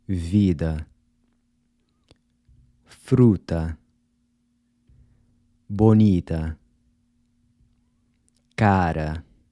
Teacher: the final “a” in these words is pronounced /ɐ/ as in “Cuba” or “sofa”, which is represented by this upside down “a” symbol.